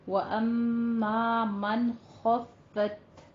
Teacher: آپ نے نون کا اخفا نہیں کرنا، اظہار ہلکی ہے کیونکہ خوا جو ہے وہ حروف ہلکی میں سے آ رہا ہے، من کہنا ہے، ٹھیک ہے، من نہیں کہنا، من جلدی پڑھنا ہے، اظہار کرنا ہے۔